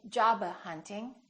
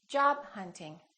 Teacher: more words that have a stop followed by another consonant remember hold it don't release the final stop